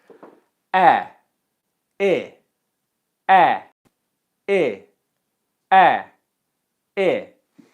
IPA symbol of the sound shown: eɪ